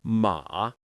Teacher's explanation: dip down like you're lowering your voice, then rise gently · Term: third tone